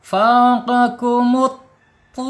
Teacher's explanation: Makhraj sama dengan ta ya, dengan ta. Hanya saja kalau to ini sifatnya isti'la, lidahnya terangkat gitu ya.